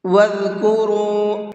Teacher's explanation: ذال کو بہت نرمی کے ساتھ میں پڑھیں گے، اور اس کا جو مخرج ہے زبان کی نوک کو اوپر والے سامنے کے جو 2 دانت ہیں وہاں ٹچ کریں گے۔ جب ہم وہاں ٹچ کریں گے زبان کو تو ہمارا ذال نکلے گا جس کے اندر سیٹی نہیں ہوتی ہے، اور را کو منہ بھر کے پڑھیں گے۔